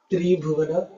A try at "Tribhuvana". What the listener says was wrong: So when you have a compound word, you have to read it like one word. Tribhuvana. Otherwise, the way you pronounce, right? Tribhuvana. Three girls who have the name as Bhuvana. Tribhuvana.